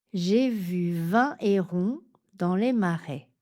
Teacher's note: Petit indice, ce mot commence par un H aspiré ou disjonctif. Donc, on ne fait pas la liaison